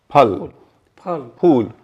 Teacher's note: हिंदी का फ जब बोलते हैं, जैसे फल, फूल, ये जो फ बोलते हैं तो हमारे दोनों होंठ एक दूसरे को छूते हैं · बाई का मतलब दो, लेबियल मतलब होंठ। तो हिंदी की जो फ ध्वनि है वो बाइलेबियल है।